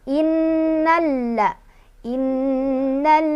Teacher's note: Innalla. Innalladzi zi mad tabi'i karena ada kasrah bertemu dengan ya sukun, dibacanya panjang 2 harokat.